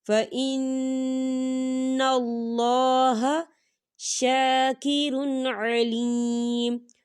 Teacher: اللہ کے نام سے پہلے زبر ہے، تو ہم اسے باریک نہیں پڑھیں گے، ہم اسے موٹا پڑھیں گے